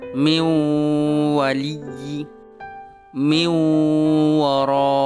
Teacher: Suara nun sukunnya dimasukkan ke dalam suara huruf wawu disertai dengan dengung. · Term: idgham bighunnah